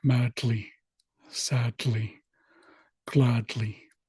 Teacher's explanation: So, if you practice the words madly, sadly, gladly, and you kind of push the D and the L together into one sound, then it sounds more like madly, sadly, gladly. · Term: lambda